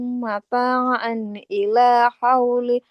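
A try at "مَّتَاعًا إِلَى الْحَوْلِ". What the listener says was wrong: Mata'an ilal lam sukunnya nggak boleh ketinggalan ya. Harus dibaca mata'an ilal hauli ghaira ikhraj.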